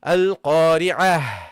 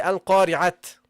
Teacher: it is pronounced as a ha when you stop